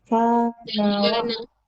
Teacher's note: Nah-nya satu ketukan. Nah-nya enggak panjang, satu ketukan saja.